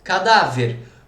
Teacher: Então, beleza, ela é uma paroxítona, a sílaba tônica é a penúltima.